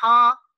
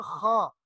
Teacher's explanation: اور ہا جو ہے، ہا، اس کو ہا اس انداز میں پڑھنا ہے کہ جو جس طرح کھنکار کی آواز آتی ہے وہ نہ آئے